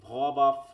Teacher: ঠোঁটটা গিয়ে দাঁতে লাগতেছে, তখন আর উপরের ঠোঁটে লাগতেছে না, নিচের ঠোঁটটা গিয়ে দাঁতের, তাই তো? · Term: ল্যাবিও ডেন্টাল